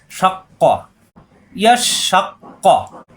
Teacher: পরের কফে জবর ক, কা হবে না, জিভের গোড়া থেকে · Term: কফের